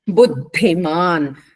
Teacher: ద కింద ధ మహాప్రాణం ఉందమ్మ